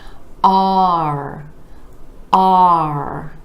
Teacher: We have the ah vowel sound moving into the R. You want to really drop your jaw for that ah vowel sound.